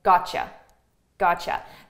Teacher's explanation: So here we have a T and a Y sound. So a T and a Y together, this is pronounced as a ch, ch.